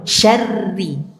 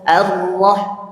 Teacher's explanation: Ro-nya dibaca tarkik atau tipis karena tasydid garis di bawah. Kalau tasydid garis di atas bacanya tebal.